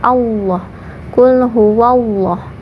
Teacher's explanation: pada Allahnya dibaca tebal atau tafkhim karena sebelum lafadz Allah ada mau yang berharakat fathah jadi Allahnya